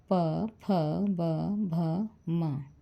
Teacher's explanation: यानी इनका उच्चारण दोनों ओष्ठों के स्पर्श से होता है, इसलिए इन्हें ओष्ठ वर्ण कहते हैं